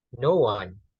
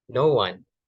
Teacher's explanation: Jadi pertama itu no itu menaikkan dulu intonasinya, kemudian bagian one itu mulai diturunkan. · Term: rise fall pitch